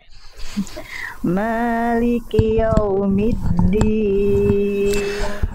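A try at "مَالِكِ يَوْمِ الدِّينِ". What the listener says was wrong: Oke, ya jelaskan Bunda, jangan sampai maliki yo, bukan yo, tapi ya. Maliki yaumiddin. Jelaskan ya fathahnya.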